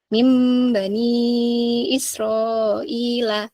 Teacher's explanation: ketika kita ketemu dengan nun sukun dengan ba Nah itu otomatis Nun sukunnya hilang seakan-akan sudah dibalik menjadi mim sukun bertemu dengan ba dan cara membaca ya yaitu dengan di didengungkan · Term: iqlab